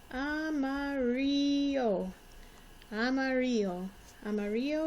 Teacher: When there are two L's together, it's going to make a Y sound. The I sounds like an E, and the A sounds like a short O sound.